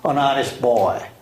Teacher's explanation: 이렇게 우리 중학교 2학년쯤 되면은 조금 응용된 얘기로 an honest boy 하고 발음할 때, 이때는 물론 모음이지만 이 H를 묵음으로 발음해서 아예 사일런트로 발음하니까 N을 넣어서 발음한다고